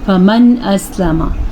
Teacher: نون ساکن کے بعد حروف ہلکی میں سے حمزہ آ گیا تو یہاں پہ نون کے ساتھ کچھ بھی نہیں کرنا، جیسا لکھا ہوا ہے ایسے ہی پڑھنا ہے۔